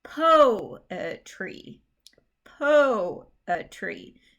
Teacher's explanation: the strong emphasis goes on that first syllable and the other two syllables are not as strong